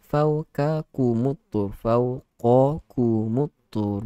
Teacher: huruf qaf itu ketebalan dia perlu diberikan sedikit lagi.